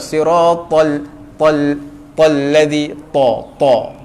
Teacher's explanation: Dia jadi bergegar sebab dia huruf tebal, penuh mulut kita. Ta. Sebab ta ni sifat dia tebal.